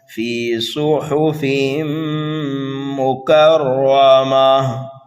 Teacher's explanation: صاد کو پر پڑھیں گے اس لیے کہ صاد یہ حروف مستعلیہ میں سے ہے